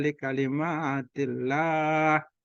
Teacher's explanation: Nah, ini Allah lafzul jalalah dibaca tipis.